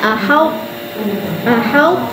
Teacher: Kena bunyikan tapi tebal dia sahaja. Ha qalqalah tak perlu.